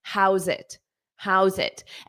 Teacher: But you have to connect how and zit together.